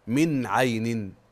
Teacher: اظهار حلقي لوقوع العين بعد النون الساكنه